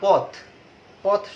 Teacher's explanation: যখন সে আলাদা থাকে, যেমন পথ, পথ শব্দটিতে থ এর সাথে শব্দের মধ্যে প হচ্ছে শুরু আর থ হচ্ছে আমাদের শেষ, তাহলে এই থ এর সাথে যে অ আছে, এই পথ শব্দটিতে অ এর উচ্চারণ কিন্তু নাই। অ আছে বাট অ এর উচ্চারণটি নাই। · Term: হসন্ত